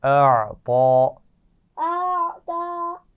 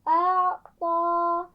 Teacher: عین کی آواز آپ کو پتہ ہے باریک ہوتی ہے، اور اس کے بعد ایک موٹی آواز ہے طا، ٹھیک ہے، کھڑا زبر کے ساتھ، تو اس کا خیال رکھنا ہے.